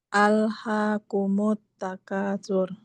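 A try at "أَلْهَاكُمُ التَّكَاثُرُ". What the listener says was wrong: Nah, itu kalau Mbak agak tebal dikit. Nah, coba ringanin lagi. Bukan tapi alhaakumut takasur. Jadi hati-hati kaf juga bisa tebal. Kalau lidahnya ngambang begini, tapi ringanin ya, jangan nanti tebal.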